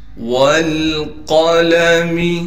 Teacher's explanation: والقلم، واو کو لام سے ملائیں گے اس لیے کہ لام ساکن ہے، قاف کو موٹا کر کے پڑھیں گے، اس لام کو بغیر کھینچے پڑھنا ہے، میم کو باریک کر کے پڑھیں گے